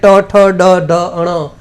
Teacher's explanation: એવી જ રીતે ટ ઠ ડ ઢ અણ, તો એ મૂર્ધન્ય છે, એટલે કે ગાળાના અંદરના ભાગમાંથી જ બોલી શકો